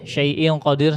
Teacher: Syaii qadir ditebalin lagi. Ditebalin lagi. Naikkan lagi pangkal lidahnya.